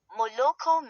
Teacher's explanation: stress on the last syllable